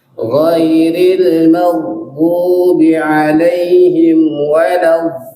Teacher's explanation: di ghairil, coba dia lagi di situ panjangnya 6 harakat, kemudian lin 4 harakat.